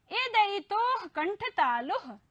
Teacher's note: अर्थात ए और ऐ का उच्चारण होता है कंठ और तालु से।